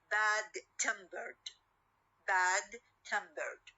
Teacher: adjectival first element and the ed morpheme at the end okay we will have uh the stress on the second part or the second word